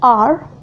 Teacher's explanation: The next place of articulation is post-alveolar. In this, the tip of our tongue approaches the place just beyond the alveolar ridge without touching it. It is also called an approximant Consonant R is called post-alveolar.